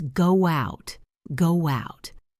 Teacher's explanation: Can you hear that little W connecting the words?